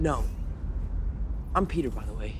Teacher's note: there's a lot less nasality in tom holland's american accent